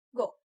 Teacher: Rounded vowels such as u in food, o in go are produced with rounded lips